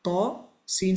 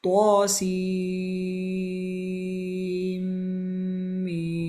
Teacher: Ta, seen 6 harakat, meme 6 harakat with ghunna in between.